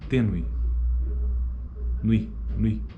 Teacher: A proeminência está na segunda vogal, no E. Logo, a primeira vogal, na verdade, é a semivogal, é a glide, né? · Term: ditongo crescente